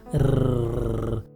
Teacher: र बोलते समय जब जीभ की नोक तालु को छूती है तो इसमें कंपन होता है, जैसे र। उसके बाद उसमें अ स्वर लग जाता है, र। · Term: कंपन जात व्यंजन